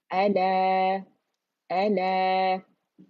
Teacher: हमजा कहाँ से, थ्रोट से ही अदा होगा ना, deepest part of the throat अक़सुल हल्क़ कहलाता है